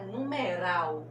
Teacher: que ral é a sílaba mais forte e que essa sílaba mais forte, ela é a última nessa palavra, olha, última, penúltima, antepenúltima, sempre do final para o começo. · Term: oxítona